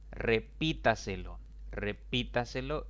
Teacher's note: la mayor intensidad de voz recae en la sílaba clasificada como antes de la antepenúltima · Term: sobre es drácula